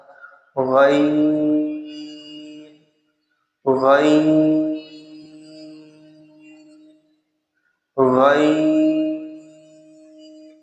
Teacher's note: غین، یہ حلق کے اوپر والے حصے سے ادا ہوتا ہے